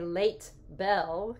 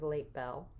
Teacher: the t which is alveolar becomes bilabial it stays voiceless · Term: assimilation